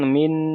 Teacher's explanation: এ নন সাকিনের পরে হরুফেফার 15টি অক্ষরের মধ্য থেকেশিন এসেছে তাই নুন সাকিনের আওয়াজকে নাকে তুলে এক আলিফ পরিমাণ গুণনা করে পড়তে হবে